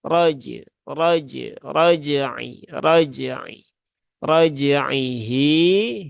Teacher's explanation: r-nya dia berbaris fathah maka tebalkan